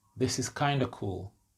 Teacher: Kind of turns into kinda.